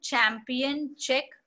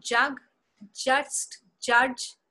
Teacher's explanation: Ch is voiceless. J whereas is voiced.